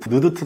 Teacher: 또 니은은 느드트 소리 한번 내보십시오. 혀가 입 속에 붙을 수밖에 없습니다. 즉 혀 끝에서 나는 소리죠. 그래서 니은, 디귿, 티귿은 혀소리인데 이게 혀설자 써서 혀소리인데요.